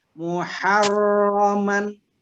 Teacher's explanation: Jadi muharronya 1 atau 2 getaran saja. Muharraman, ro tebal ya.